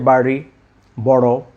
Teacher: একটু মুখের ভিতরে ড এবং র এর মাঝামাঝি উচ্চারণ করতে হবে।